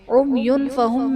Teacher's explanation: عمیون فہم میں یا پر دو پیش کی تنوین، تنوین کے بعد حروف اخفا میں سے فا ہے تو یہاں پر اخفا کا قاعدہ ہوگا، یعنی تنوین میں ہم غنہ کر کے پڑھیں گے